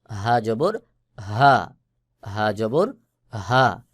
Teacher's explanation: এই হা হলকের শুরু থেকে উচ্চারণ হবে মোটা করে আওয়াজ হবে